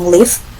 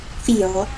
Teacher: The L in live is a clear L, and now you can say feel. The L in feel is a dark L. You can feel your tongue move back for the second one, and that is polarization.